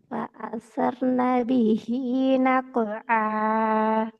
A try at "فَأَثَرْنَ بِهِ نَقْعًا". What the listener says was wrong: நகுஅ நகுஅ உடையக்கூடாது. நகுஅ. சேரணும். فأثرن به نقعا.